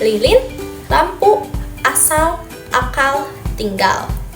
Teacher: Secara fonetik, bunyi L disebut konsonan lateral alveolar bersuara. Artinya, udara keluar dari sisi lidah, bukan dari tengah. Ujung lidah diletakkan di belakang gigi atas, tepatnya di bagian yang disebut alveolar ridge. Dan karena ini adalah bunyi bersuara, pita suara kita bergetar saat mengucapkannya.